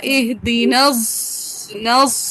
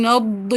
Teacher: اس کے اندر ضاد کی آواز ہی آنی چاہیے، اس کے اندر ضا کی آواز ہی آنی چاہیے، خالص زا ہونا چاہیے، سیٹی والا زا